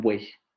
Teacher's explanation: yo no puedo separar esos 3 elementos porque los 3 elementos se pronuncian en la misma, en el mismo momento articulatorio · en buey esas tres vocales se están pronunciando juntas